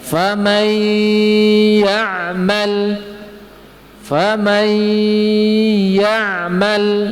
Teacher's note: Contoh miwaliyin, famay ya'mal juga seperti itu. Famay, harus ada gunnah dari khoisum, dari hidung yang menyertainya